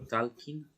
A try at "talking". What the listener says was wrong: No decimos nunca la L. Talking.